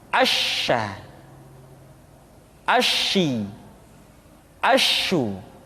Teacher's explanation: Berikutnya huruf sya. Sya dikeluarkan dengan cara mengangkat tengah lidah kita ke langit-langit.